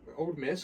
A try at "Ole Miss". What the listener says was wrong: it's not old. It's like Lil Wayne. It's not Little Wayne. It's Lil Wayne. It's Ole Miss.